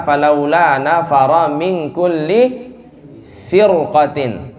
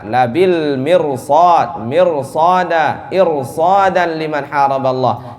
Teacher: ra sukun berarti kita lihat sebelumnya harakat sebelumnya kasrah maka tipis, tetapi setelahnya ada huruf isti'la maka tebal